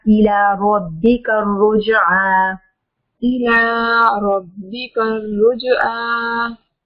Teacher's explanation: را کے اوپر زبر ہے، را کو موٹا